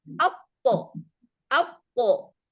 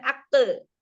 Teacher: sifat isti'la yang pangkal lidahnya naik, maka dia menjadi tebal. Maka qalqalahnya pun tebal. Maka bunyinya ketika dia sukun, atto, atto, tebal.